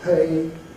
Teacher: the p is being aspirated with the H